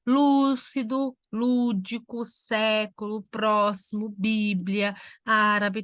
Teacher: Fazendo separação das três últimas sílabas. Todas elas, a sílaba tônica recai na terceira, contando de trás para frente, na antepenúltima sílaba. Lúcido, lúdico, século, próximo, Bíblia, árabe, todas essas palavras são acentuadas pelo mesmo motivo, todas elas são proparoxítonas.